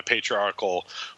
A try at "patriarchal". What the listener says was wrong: Yeah, you said article.